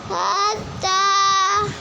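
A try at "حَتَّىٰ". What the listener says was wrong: हत्ता। हा की आवाज़ नहीं आ रही।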